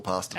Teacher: hear the little sound at the end there we call it the schwa